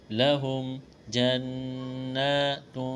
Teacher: یہاں نون مشدد ہے، آواز ناک میں چھپائیں گے، غنہ کریں گے